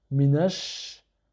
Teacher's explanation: il est suivi d'une lettre solaire qui est le shin qui se dédouble. Donc on va faire la liaison avec le premier shin, ça va nous donner minash.